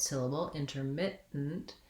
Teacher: we have our lax I vowel in our mit syllable